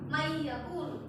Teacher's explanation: Nun matinya bertemu dengan huruf ya. Jadi huruf suara nun matinya itu gak kedengeran karena dimasukkan kepada huruf ya. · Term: idgham ma'al gunnah